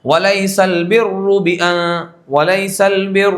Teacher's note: جیسے لیس البر، یہ را، تو جو را کے اوپر جو ہے یہ تشدید ہے، آپ دیکھیں یہ تو تشدید کے اوپر زبر ہے. اب زبر تشدید ہے تو 2 را ہیں، تو دونوں را پر ہوں گے. ایسا نہیں کہ ایک را سے پہلے زیر ہے تو را باریک کر دیں گے، دوسرے کے اوپر زبر ہے تو اس کو پر کر دیں گے، ایسا نہیں، بلکہ دونوں را پر ہوگی.